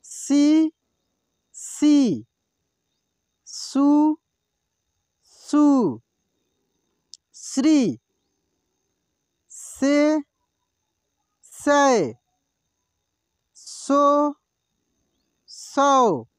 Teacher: ये दंत स है, इसका उच्चारण दांत से होता है